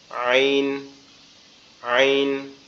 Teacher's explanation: আইন হচ্ছে আমাদের কণ্ঠনালীর মাঝখান থেকে, কণ্ঠনালীর মধ্যখান থেকে উচ্চারিত হবে আইন, আইন, কণ্ঠনালীর মধ্যখান থেকে উচ্চারিত হবে আইন এভাবে, আইন, আইন এভাবে, আইন।